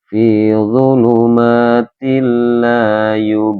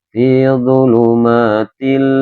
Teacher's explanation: Dibacanya memasukkan tetapi dengan tidak mendengung. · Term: idgham bila hunna